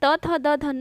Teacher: हमारा जो जीभ है वो दांत को टच करता है। ठीक है, इसीलिए दंतव्य व्यंजन कहते हैं।